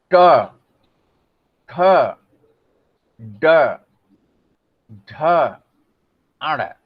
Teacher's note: जीभ सीधे खड़ी होकर के और जाकर के जो है ऊपर वाले गड्ढे वाले भाग को छू रही है। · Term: मूर्धा